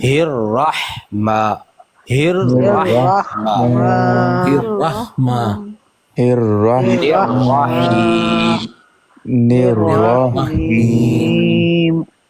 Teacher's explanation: یہ اللہ کی جو ہا ہے یہ نارملی پڑھی جاتی ہے ہا، ٹھیک ہے، بھاری آواز کے ساتھ. اور جو رحمان کی ہا ہے یہ حلق سے نکلتی ہے